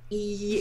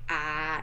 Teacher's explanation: if you talk about e it's really high in your mouth but if you say ah it's lower